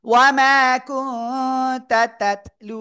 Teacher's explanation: নুন সেকেন্ডের পরে ইকফার অক্ষর কফ নাকের ভিতরে গুণা হবে। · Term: ইকফা গুন্না